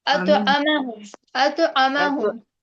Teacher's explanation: मीम को खींच रहे हैं आप लोग। मीम को नहीं खींचेंगे, आइन को भी नहीं खींचेंगे, हरकत है ना, दोनों पे जल्दी पढ़ेंगे। أطعمهم अतुआमहुम अतुआमहुम أطعمهم तो आप पर कलकला होगा।